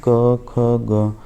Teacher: इनमें जीभ के मूल का स्पर्श होता है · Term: जीवा मलीय